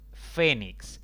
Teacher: palabra de dos sílabas con la mayor intensidad en la penúltima sílaba contando de izquierda a derecha como no termina esta palabra ni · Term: palabras graves